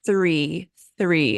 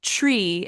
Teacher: some people will say like tree instead of three especially when you have that t and that R together it can be hard so really practicing isolating that sound of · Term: th sound